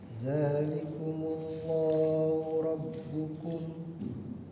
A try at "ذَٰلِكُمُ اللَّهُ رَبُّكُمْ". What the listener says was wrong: Pak coba zalnya di ujung lidah. Zalikum. Jangan za. Ujung lidah sekali ya.